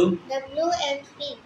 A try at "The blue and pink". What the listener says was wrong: অ্যান্ড না, অ্যান্ডের ডি বাদ যাবে, the blue অ্যান্ড pink. Pink, pink, pink, pink, pink, the blue and pink.